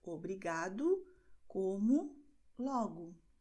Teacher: que a letra O, no fim da palavra, tem o som de U. Por isso, nós dizemos em português, obrigado, como, logo.